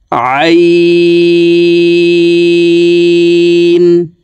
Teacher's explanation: আইন হরফকে হলকের মধ্যখান থেকে চাপ দিয়ে উচ্চারণ করতে হবে, কারণ আইনের মাখরাজ হলকের মধ্যখান থেকে হবে।